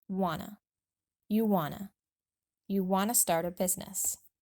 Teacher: We link the two words together and drop the t completely so it sounds just like wanna.